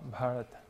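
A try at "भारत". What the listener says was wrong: No, Bharata. Yeah, it's a long syllable. Long syllable. And in Sanskrit, the long syllable is twice as long as the short one. So Bharata, Bharata.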